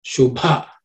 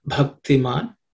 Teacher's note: The bha in the bhakti is also an aspirated consonant. So you should give extra air and stress a bit.